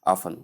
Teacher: Simply say often with a silent T. Even though the two are correct, the one most I mean the one more correct is often without the T pronounced.